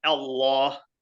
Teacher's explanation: when you say Allah you're actively engaging the back of your throat by lifting the tongue